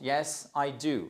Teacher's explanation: Là, c'est une affirmation. Vous redescendez sur la fin de la phrase. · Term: intonation théorique courante